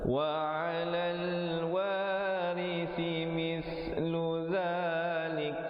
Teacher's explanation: Wa 'alal wari, ri-nya menjadi nipis, ri si di hujung lidah, si mis kali lagi di hujung lidah, mislu zalik, ada hamas di situ, bunyi angin